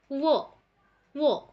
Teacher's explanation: উপরের যে দাঁত সেটা নিচের যে ঠোঁট সেখানে টাচ করবে,